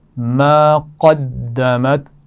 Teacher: قاف کو موٹا پڑھیں گے، دال کو سختی سے پڑھیں گے